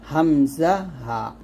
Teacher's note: এক নম্বর মাখরাজ কণ্ঠনালীর শুরু হয়তো উচ্চারণ করতে হবে হামজা হা